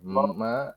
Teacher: mah tuh maknya tipis tapi khoknya tebal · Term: tipis tebal